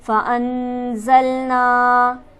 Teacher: نون پر ہمارے پاس حرف مدہ موجود ہے، اسے ہم کھینچیں گے ایک الف کے برابر · فَأَنزَلْنَا نون ساکن ہے، یہاں پر ہم غنہ کریں گے